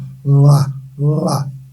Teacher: o l simplesmente passa a língua no céu da boca